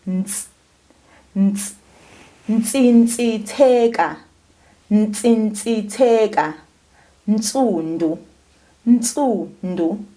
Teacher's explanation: You'll feel a little bit of air coming out between your teeth.